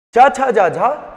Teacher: चा छा जा झा स्पर्श संघर्षी कहलाते हैं